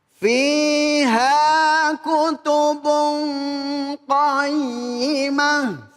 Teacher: tanwin di sini ada tanwin nih. Ketemu dengan qaf, maka dibaca ikhfa, dibaca samar.